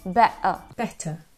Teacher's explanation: Но, например, в Британии часто можно услышать, как они произносят это слово как better, то есть делая такой glottal stop, как бы останавливая воздух у себя в горле и делая better.